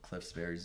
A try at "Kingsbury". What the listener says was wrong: Cliff Kingsbury. You said Cliffsbury. You blended them together.